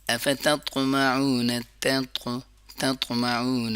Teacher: تا کی آواز باریکی سے پڑھیں گے اور طا کی آواز موٹا کریں گے